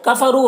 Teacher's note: रौ को पुर पढ़ेंगे, वाव मद्दा है 1 अलिफ के बराबर खींचेंगे।